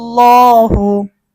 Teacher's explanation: আল্লাহ শব্দের ডানে জবর থাকার কারণে আমরা আল্লাহ শব্দের লামকে মোটা করব